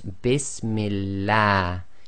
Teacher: Kasra before the name of Allah makes the lam of Allah go tarqiq, i.e. light. So you have to say the a sound, not the r sound.